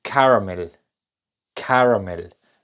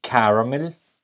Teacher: observen que la a primera es la que suena larga